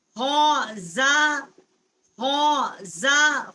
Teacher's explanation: خا جو ہے حروف حلقی ہے ادنائے حلق جو ہے جو منہ کی طرف والا حصہ ہے حلقہ وہاں سے اس کا مخرج ہے خا کا.